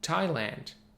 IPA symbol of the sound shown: æ